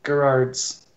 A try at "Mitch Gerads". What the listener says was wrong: There's only one R. Gerads. Mitch Gerads.